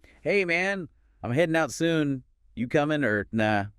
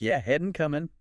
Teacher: Did you notice the dropped G sound at the end of headen and coming?